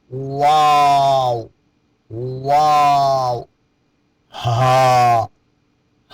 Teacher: ہا کا مخرج حلق کا وہ حصہ جو سینہ کی جانب ہے۔ · واو، دونوں ہونٹوں کے درمیان سے۔